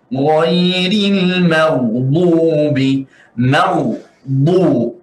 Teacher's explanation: pastikan ba tebal dan muncung sedikit atau munyung